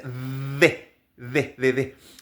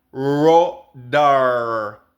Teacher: Y acuérdense de la D, que nuestra D es en los dientes D. Pero su D es atrás. Entonces es algo así como rodar.